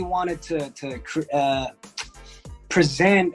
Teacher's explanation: most of the time we say ta instead of to.